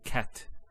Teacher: there's actually a stop on the letter t so we say cat so the t doesn't have any vowel associated with it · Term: sukun